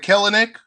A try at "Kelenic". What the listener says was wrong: Kelenic. It's Kelenic. Don't pronounce the extra E. It's just Kelenic.